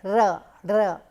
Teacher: the tip of the tongue actually hits the position behind the teeth ridge, and so it actually bangs repeatedly · Then we have another type of sounds which are again produced with the tip of the tongue hitting the teeth or the upper portion of our mouth, which is alveolar ridge. Here the tip of the tongue comes near the teeth or the alveolar ridge to block the air, and then it releases it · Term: trill